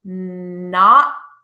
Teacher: when a word ends in a T it just holds the sound it's not produced · your tongue moves into the position of the T, up behind your top front teeth, and it stays there. It holds the sound. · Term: ending T